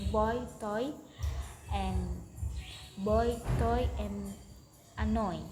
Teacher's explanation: This is a diphthong in B starting with mid back rounded vowel and gliding towards a high front position E.